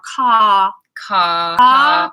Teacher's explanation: in British English we'll just elongate we'll just have a long vowel